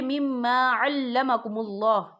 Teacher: اللہ کا نام پر پڑھا جائے گا کیونکہ اللہ کے نام سے پہلے پیش ہے